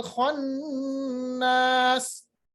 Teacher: खा का मखरज ये अदना हलक है, थोड़ी सी खराश होगी